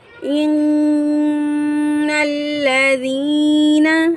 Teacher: نون مشدد ہے، نون پر ہم غنہ کریں گے۔ ان الذین، اس حرف کے اندر یا مدہ ہے، یا ساکن سے پہلے زیر، ایک الف کی مقدار کھینچ کر ادا کریں گے۔